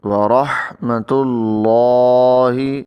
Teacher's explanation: اللہ کے نام کے اندر جو لام ہے اس کو یہاں پر ہم موٹا پڑھیں گے، کیونکہ اللہ کے نام سے پہلے جو تا ہے اس کے اوپر پیش ہے، تو اس لیے اس لام کو موٹا پڑھیں گے.